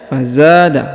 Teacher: huruf za dibaca 2 harokat karena di depannya terdapat alif